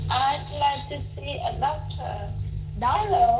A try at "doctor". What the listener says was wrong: Doctor, đừng có nói nặng là doctor, không phải doctor, doctor, yeah, doctor.